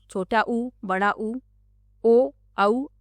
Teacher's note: वृत्ताकार और अवृत्ताकार। जिन स्वरों का उच्चारण करते समय होंठ गोल हो जाते हैं, उसे वृत्ताकार स्वर कहते हैं।